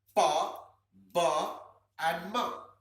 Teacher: Ma sounds slightly nasal, but pa and ba pure bilabial sounds.